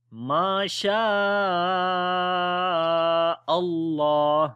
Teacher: Before the name of Allah there is fatha, so we read the name of Allah in heavy sound